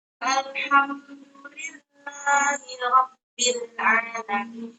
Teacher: Rabbil itu dibaca tebal karena sebelumnya berharokat fathah.